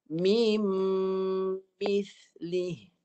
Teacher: Lepas mi terus nun ni masuk dalam mim. Jadi bunyinya bunyi mim lah. 2 harakat dengung. Mim. Tak ada bunyi nun dah. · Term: diidghamkan